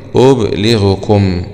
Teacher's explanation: أسكن الباء وكسر اللام مخففة أبو عمرو